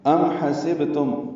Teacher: یہ دونوں میم ساکن ہیں، دونوں الفاظ کے آخر میں اس پہ اظہار شفوی ہے